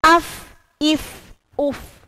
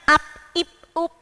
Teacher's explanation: Huruf fa cara membacanya yakni ada aliran udara atau ada aliran nafas karena dia termasuk sifatul huruf yang masuk pada hamas. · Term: hams